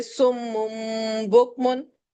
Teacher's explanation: میم آ گیا، اور یہاں پر بھی جب ہم میم میں تبدیل کرتے ہیں تو ہم ہونٹوں کو میم والی جگہ پر سختی سے بند کرتے ہیں اور غنہ کرتے ہیں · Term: اقلاب